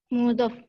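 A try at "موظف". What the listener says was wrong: Muwazzaf. Ya, ini ada tasdidnya. Muwazzaf.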